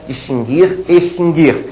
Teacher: distinguir extinguir a letra U não é pronunciada · a pronúncia é distinguir sem pronunciar a letra U